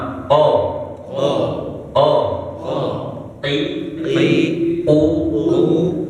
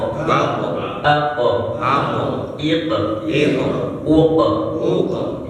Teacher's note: Kalau qaf kan dia di pangkal lisan ya, kalau kita umpamakan lisan naik sedikit dia huruf K ya. Makanya sering ketukar juga antara qaf dengan kaf itu ya.